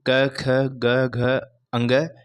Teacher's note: तो सबसे पहले आता है कंठे। कंठे से क वर्ग यानी क, ख, ग, घ, अंग का उच्चारण किया जाता है।